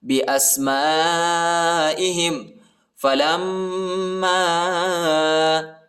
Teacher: لام کو میم کے ساتھ ملائیں گے اور غنہ کریں گے. الف پر چھوٹا مد آیا ہے، اس کو تقریباً 2-3 سیکنڈ تک کھینچنا ہے